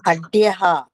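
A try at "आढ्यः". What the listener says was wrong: ఆగదీర్ఘం ఉండాలమ్మా, ఆఢ్యం ఉండాలి. అది అధ్యం ఉంది శ్లోకంలో. కొత్త పుస్తకంలో దిద్దుకోండి, ఆఢ్య ఉండాలి. కొత్త పుస్తకంలో అఢ్య ఉంది శ్లోకంలో. అది ఆఢ్య.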